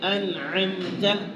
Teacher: اب نون کو ہم نے بالکل ظاہر پڑھا ہے، میم کو بھی بالکل ظاہر پڑھا ہے، اس کے اندر کسی قسم کی غنے کی آمیزش نہیں کی ہم نے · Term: اظہار